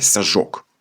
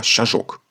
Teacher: при швидкому мовленні свистячий звук с уподібнюється до шиплячого ж і сяжок перетворюється на щажок. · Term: асиміляція